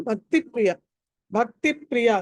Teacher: భక్తి ప్రియలో భా అన్నది మహాప్రాణం ఒత్తి పలకాలి. భక్తి గమ్య, భక్తి గమ్య, భా మళ్ళీ మహాప్రాణం ఒత్తి పలకాలి.